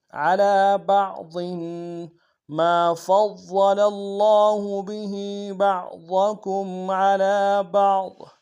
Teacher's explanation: ضاد کو موٹا ادا کریں گے، ضاد کے نیچے تنوین غنہ کریں گے